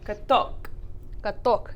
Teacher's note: the stress switches over to the second syllable